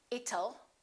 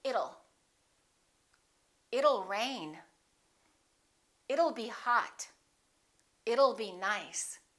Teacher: let's change that T into a fast D and say it'll